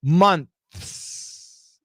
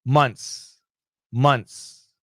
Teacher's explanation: And then you can hear my S at the end. But when Americans say it fast, the TH is gone, and we say months, months.